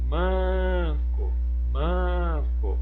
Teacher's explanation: em manco, a sílaba tônica é o man